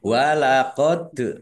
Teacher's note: dal sukun bacaan kolkolah dibaca memantul ditampakkan pantulannya